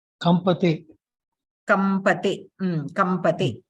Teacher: Anuswara is being replaced with makara because the anuswara is followed by pa. So pa vargasya panchamaksharam makaraha asti, makaraha anuswara sthane adeshena bhavati.